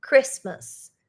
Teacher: For us Brazilians, it's very hard not to pronounce the T, but we don't pronounce the T